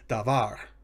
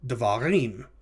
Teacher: noun in which the second of the two syllables is accented pluralization often reduces the first vowel to a shava